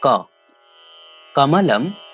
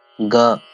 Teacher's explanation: वस्तुतः एते कवर्गान्तर्गताः पञ्चवर्णाः कण्ठ्यवर्णाः इति कथ्यन्ते। वस्तुतः एतेषां वर्णानाम् उच्चारणस्थानमेव कण्ठः इति भवति।